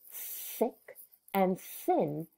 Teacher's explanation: when you say thick and thin, your tongue nor your throat vibrate and it is quiet